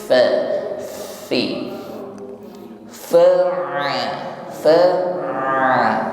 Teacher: Fa diawali dengan huruf fa, makhrajnya ujung gigi bertemu bibir bawah ya, tepatnya ujung gigi bertemu bibir bawah bagian tengah ya. Sifat yang mengiringinya hamas ya, jaroyanun nafas, alirkan nafas